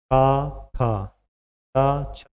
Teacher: स्वर तंत्रिका में कंपन उत्पन्न नहीं होते यानी जब बोलेंगे कंपन नहीं होगा व है अघोष जैसे का